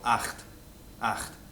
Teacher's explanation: It's the same, what they call a velar fricative that you find in German. For example, acht, acht, the word for 8, right?